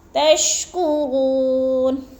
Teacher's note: کرو پہ وہ مدہ ہے، وہ ساکن سے پہلے غو کے اوپر پیش ہے تو ادھر وہ مدہ، وہ مدہ کو ایک الف دو حرکات کے برابر ہم نے لمبا کر کے پڑھنا ہے